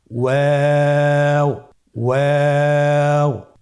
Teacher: ওয়াও হরফটি উচ্চারণের ক্ষেত্রে বারিক হবে এবং 3 আলিফ টেনে পড়তে হবে।